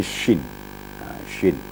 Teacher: syin itu makharijul hurufnya atau makhrajnya adalah pertengahan lidah dan langit-langit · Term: huruf syin, huruf Shin